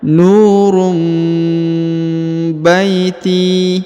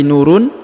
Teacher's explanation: huruf harakat UN bertemu dengan huruf ba maka dia berubah menjadi mim ya contohnya nurum Baiti Jadi nurum bukan lagi Nurun tapi nurum